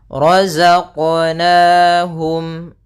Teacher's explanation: ra tebal yaitu ra tafkhim ditandai dengan ra yang berharakat fathah